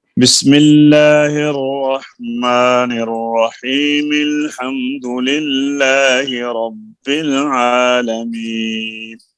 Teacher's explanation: یہاں پر ہم نے سانس نہیں لیا، بسم اللہ کو الحمد سے ملا دیا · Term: وصل